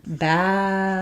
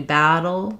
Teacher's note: So in battle, we're going to have the flap T is one tap up of the tongue. So it's like one roll of a rolled R.